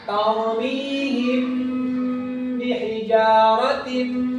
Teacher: Ditahan 2 harakat disertai dengan dengung. Contohnya ta'mihim bihijaratin. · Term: ikhfa syafawi